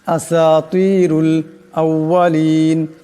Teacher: এখানে রার উপর পেশ আছে আওয়াজটা মোটা করিয়া পড়তে হবে